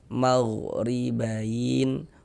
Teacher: harakat kasrah baris satu di bawah huruf ni. Maka huruf ra dibaca tarkik, dibaca tipis.